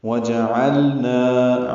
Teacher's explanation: عین وسط حلق سے ادا کریں گے، اس سے پہلے واو ہونٹوں کی نا تمام گلائی سے ادا کریں گے. نا الف مدہ ہے، دو حرکات لمبا ہے.